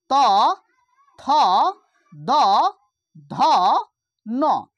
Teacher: त वर्ग में जते वर्ण छै, त, थ, द, ध, न, ई सबटा के उच्चारण कतऽ से आबि जेतै, दांत से